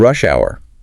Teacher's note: noting the stress on the first word because it's a compound noun. Yeah, compound nouns usually have the stress on the first word.